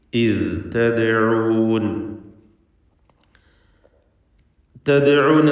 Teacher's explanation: ഇദ് തദ്ഊൻ, തദ്ഊൻ എന്നതിലെ ദാലിൻ്റെ സുക്കൂൻ ഖൽഖല സുഗ്റ നൽകി ശബ്ദം ഹറക്കത്ത് പോലെ ചലിപ്പിക്കണം